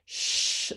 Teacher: to pull back a little bit further for the shh sound my lips are rounded and my tongue is pulled back